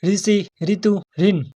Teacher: ऋ का जो उच्चारण स्थान होता है वह होता है मूर्धन्य। · मूर्धन्य होता है जीभ को पीछे मोड़कर और ऊपर छत पर लगाकर जो ध्वनि बोली जाती है। जीभ को पीछे मोड़कर उच्चारित होने वाली ध्वनि को मुरधन्य कहते हैं। · जीभ को ऊपर को और पीछे की ओर मोड़कर और ऊपर छत पर लगाने से, मूर्धा से लगाने से इसका उच्चारण होता है।